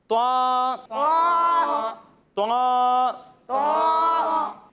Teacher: اسے ہم موٹا کر کر پڑھیں گے اور اسے ایک الف تک کھینچیں گے